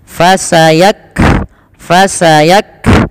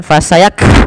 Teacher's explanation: ketika melafalkan Kaf sukun yaitu huruf kafnya yang pertama ditahan dulu nafas Maaf ditahan dulu suaranya baru alirkan nafas fasak fasak bukan fasayak langsung tapi tahan dulu nafas suaranya baru